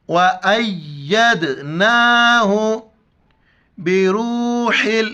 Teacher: ہا کو گلے سے کرنا ہے، را کو واف کے ساتھ ملائیں گے اور ہا کو لام کے ساتھ، قوف کو موٹا کر کے پڑھیں گے.